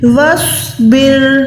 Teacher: وا کو الف کے ساتھ نہیں بلکہ سواد کے ساتھ ملا کے سواد کو موٹا رکھیں